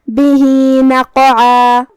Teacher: ہا کے نیچے کھڑا زبر ہے، یہاں حکم ہے صلہ صغرا، ہم اپنی آواز 2 مد کے برابر لمبی کریں گے